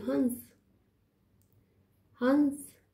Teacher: जब बिंदी ऊपर लग गई अनुस्वार ऊपर लग गया तो उसका उच्चारण जो है नाक से हो रहा है